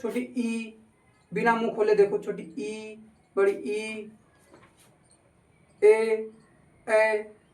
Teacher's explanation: जिह्वा के आधार पर 3 प्रकार के होते हैं, अग्र स्वर, मध्य स्वर, पश्च स्वर। अग्र स्वर जिह्वा के अगले हिस्से से बोले जाते हैं।